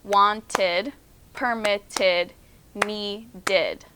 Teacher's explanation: it adds on the sound of ID it also adds on a second syllable wanted permitted needed all right onto the second column which is